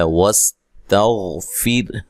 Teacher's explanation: سین کو باریک سیٹی سے ادا کرنا ہے، تا کو باریک پڑھنا ہے، غین کو موٹا ادا کرنا ہے، ٹھیک ہے، لیکن ہلانا نہیں ہے، یہ موٹا حرف ہے۔